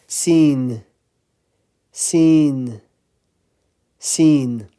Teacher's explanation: Sin, same position as za. So again, the tip of the tongue is touching the bottom front teeth.